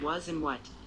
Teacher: The shorter rounded vowel in was and what.